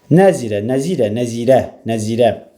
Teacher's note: Nəzirə. Vurğu sona düşür.